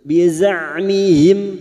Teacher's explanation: Hati-hati pada saat membunyikan huruf zain. Huruf zain torful lisan atau ujung lidah sejajar gigi seri bawah. · Mim sukun dibaca jelas tanpa mendengung, idhar syafawi.